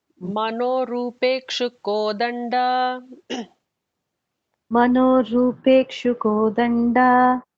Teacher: And the Da is the regular Da, not the Mahaprana.